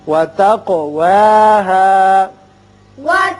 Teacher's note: قاف چونکہ مجزوم ہے اس لیے اس کی صفت قلقلہ ادا کریں گے